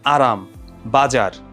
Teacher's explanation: জিওভার যে অগ্রভাগটা সেটা হচ্ছে কম্পিত হয় এবং এটা যেটা হয় যে দন্তমূলকে দাঁতের যে মূলটা থাকে ওখানে একাধিকবার খুব দ্রুত আঘাত করে · যেমন আরাম, বাজার, জিহ্বার অগ্রভাগটা কি হচ্ছে? অগ্রভাগটা কম্পিত হচ্ছে এবং দন্তমূলের যেই অংশটা সেই জায়গাটাতে হচ্ছে একাধিকবার খুব ফাস্ট স্পর্শ হচ্ছে, এই জন্য হচ্ছে আমরা এটাকে বলছি কম্পনজাত ধ্বনি, খুব দ্রুত আঘাত হচ্ছে ওই জায়গাটাতে।